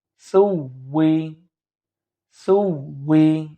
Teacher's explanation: এখানে লক্ষ্য করুন এখানে তো সা, সা আছে, সুতরাং একটু হালকা করে জিহ্বার আগাটা দাঁতের উপরে, উপরের দাঁতের উপরে লাগিয়ে দিলে ইনশাল্লাহ সাটা হালকা করে আমাদের উচ্চারণ হয়ে যাবে